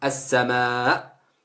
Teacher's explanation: Et la lettre Ha, la Hamza, et a une sifette en fait qui est ouais, c'est Ashidda, c'est-à-dire qu'en fait elle coupe le son. Il y a coupure du son en fait quand on dit la Hamza, le A.